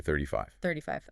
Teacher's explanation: Generally, when you're saying a sequence of numbers like that, the main stress falls on the very last number in the sequence